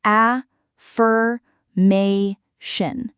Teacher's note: The stress sits on the ma syllable, affirmation, not affirmation.